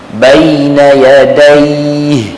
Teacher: kalimah yadaih dengan ada ha di hujung tu, maka kita jangan sembunyikan ha itu.